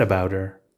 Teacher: the t is pronounced d we lose the h sound completely and the two words are pronounced as one